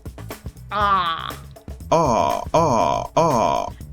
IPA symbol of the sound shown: ɑ